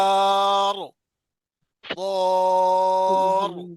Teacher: وقف کی حالت میں راہ جی موٹی پڑی جائے گی کیونکہ پیچھے زبر ہے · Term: راہ کو موٹا پڑھنا